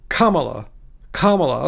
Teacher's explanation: the accent for Kamala's name is on the first syllable